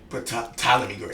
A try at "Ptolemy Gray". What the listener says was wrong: Ptolemy. The T is silent.